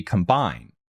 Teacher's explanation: combine with the emphasis on the second syllable